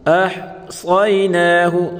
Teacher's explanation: وَكُلَّ شَيْءٍ أَحْصَيْنَاهُ، ہا پڑھیں گے، أَحْصَيْنَاهُ، صاد کو پر پڑھیں گے۔